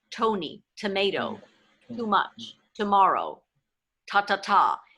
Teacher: more see how the tongue peeks through the teeth right but if I say words that begin with T in English my tongue doesn't peek out my tongue hits the gum Ridge up top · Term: standard american tea